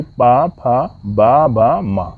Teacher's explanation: तो पा वर्ग का उच्चारण स्थान ओष्ठ होगा, यानी कि पा, फा, बा, भा, मा। इन 5 वर्णों का उच्चारण स्थान ओष्ठ होगा।